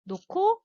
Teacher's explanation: 히읗 플러스 기억은 하나로 키읔으로 하나로 된다는 거예요